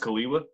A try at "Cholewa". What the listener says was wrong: Very close. Kaliva with a V.